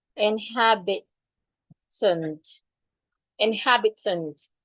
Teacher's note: we are stressing the second syllable